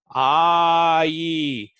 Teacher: you go from ah your mouth is open like you're saying ah and then e your mouth is spreading the grin now slide between them